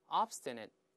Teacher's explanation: 最后▁t▁舌尖顶住憋住气